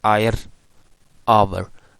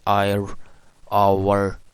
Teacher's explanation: sometimes some people also pronounce retroflex at the end of word like ire, over